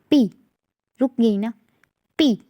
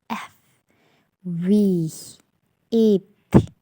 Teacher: Do not feature friction, इसमें friction नहीं होगी। The breath is completely stopped